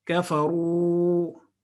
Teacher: واو مدہ پچھلے والے حرف پہ اگر دمہ ہو تو اس کی او ساؤنڈ کو 2 سیکنڈ لمبا کر دیتا ہے